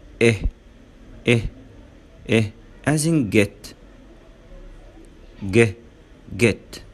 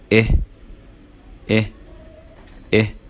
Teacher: جرب تقول إيه إيه إيه as in get جه get. بالنسبة للطنج اللسان بيكون relaxed، relaxed معناه مرتخي. mid high position، mid high position معناها ان هو مرتفع قليلا في منتصف الفم